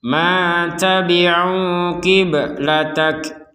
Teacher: Kita tidak mengharokatkan atau menghidupkan huruf ba karena huruf ba ini sudah mati sehingga tinggal pantulannya saja. Yang karena sudah pantulan saja jangan sampai kibe, sekedarnya saja.